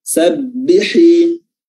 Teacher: Sabbihi, dan huruf ha, ya, tajam keluar dari tenggorokan bagian tengah. Sabbihi, ya.